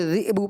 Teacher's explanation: ذئب یعنی زال کے نیچے زیر تو آپ نے ذئب پڑھنا تھا، لیکن ذئ ہو گیا، اور دوسرا حمزہ ساکنہ کے اندر جو آپ کو پتہ ہے اس کو جھٹکا دے کے پڑھتے ہیں نا.